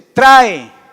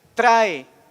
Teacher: Ahí tiene acento la A y suena más fuerte que la E. Trae. Ahí se termina el diptongo.